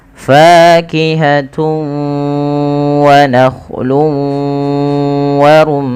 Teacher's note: cara membacanya yaitu memasukkan tanwinnya kepada huruf wau · Cara membacanya yaitu memasukkan tanwinnya kepada huruf waw, karena idgham itu artinya memasukkan, bi gunnah disertai dengan gunnah. Maka kita masukkan dulu huruf tanwinnya, fakihatun menjadi fakihatu. Langkah yang kedua yaitu ditahan suara wawnya. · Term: Idgham bighhunah, idgham bi gunnah